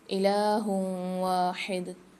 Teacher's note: دو پیش کی تنوین کے بعد واو مشدد آ رہی ہے، یہاں غنہ کر کے پڑھیں گے. لا الہ الا هو الرحمن الرحیم، لام کے ساتھ الف بھی اور مد بھی ہے، 3 سے 4 الف میں دار کھینچیں گے.